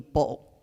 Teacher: We do something that the Dutch do, which is a double glottal stop, which basically means you open your throat twice.